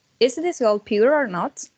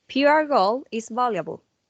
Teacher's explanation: when the following word begins with a vowel, the R sound is pronounced to make a kind of a smooth link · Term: linking R sound